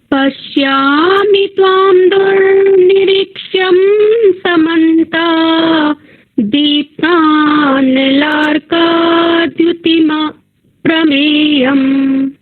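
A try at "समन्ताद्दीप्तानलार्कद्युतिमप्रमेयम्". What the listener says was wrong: छोटी छोटी सूक्ष्म दो त्रुटियां आप कर रहे हैं यहाँ पर समन्तात एक साथ लेंगे क्योंकि दो द हैं यहाँ पर। समन्तात, फिर आप बोलेंगे दीप्तानलर्काद्युति, क्योंकि संयोग है।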